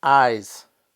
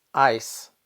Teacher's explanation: The only difference in pronunciation between eyes and ice is the voiced z and the unvoiced s.